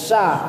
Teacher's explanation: Jadi tengah lidah naik atau diangkat ke langit-langit.